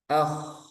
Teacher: Ya, ini tebal ya. K ngalir dan tebal.